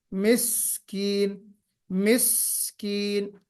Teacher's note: سین میں سیٹی بھی بجنی چاہیے اور صفت ہمس بھی ہونی چاہیے، جو کنٹینیوٹی ہوتی ہے آواز میں، جریان النفس ہونا چاہیے اور یا جریان الصوت بھی اس میں ہونا چاہیے، وہ مجھے کم نظر آیا ہے نا۔